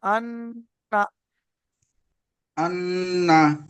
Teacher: হামজা নুন যাবার আন, নুন যাবার না, আন্না। আরেকটু গুণনা হয়েছে, একটু বেশি করে করেন